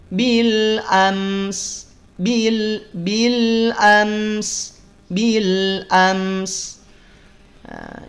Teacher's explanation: Jangan memantul mim sukunnya, jangan dijeda, jangan ditahan kelamaan. · Saat mim sukun juga jangan sampai dijeda. Mim sukun itu kan izhar syafawi. Jelas, mesti jelas mimnya. Jangan samar. Bil am terdengar nampak jelas mimnya.